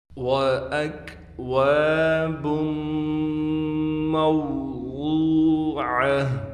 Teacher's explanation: وَأَكْوَابٌ مَوْضُوعَةٌ، یہاں بھی ہم نے حمزہ کے بعد کاف ہے، کاف کو بغیر قلقلے کے پڑھیں گے، بالکل باریک کر کے